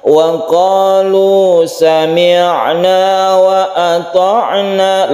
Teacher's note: lemas saja ketika membaca ain ya. Ain itu bersifat tawassut atau tengah-tengah.